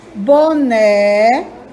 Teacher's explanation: O né é a sílaba mais forte. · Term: sílaba tônica